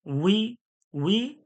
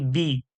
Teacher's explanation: ওয়াও জের বি বলছি কিন্তু ঠোঁট গোল করে উই বলছি, আর বাজের বি এমনি বারিক করে পাতলা করে বলছি